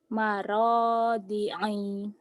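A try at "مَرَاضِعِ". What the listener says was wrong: Maradi'i. Pendek, ulang.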